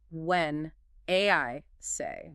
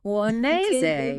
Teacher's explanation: The N from when connects to the I. The I vowel flows smoothly into the S sound of say.